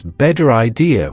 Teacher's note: First, let's take the phrase better idea in general American English. This often becomes better idea with a flapped T. In British received pronunciation, it might remain better idea with a clearer teeth sound.